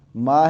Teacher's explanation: ایک الف کے برابر مد کریں گے، 1 سیکنڈ کے برابر، زیادہ بھی لمبا نہیں کرنا